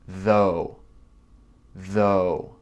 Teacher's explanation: comme un v ça vibre